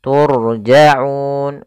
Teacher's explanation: Ro yang didahului dengan damah dan ro sukun itu kita baca dengan ro tafkhim ro yang dibaca dengan tebal ro tebal tafkhim Kemudian pada lafal Unun ada bacaan Mad Arid